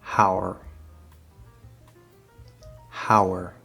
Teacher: do you hear that small w between the two